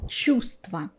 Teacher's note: I skip this v because I have a group of consonants, many consonants together, and in order to make it easier for me, for other people, I don't pronounce one of them.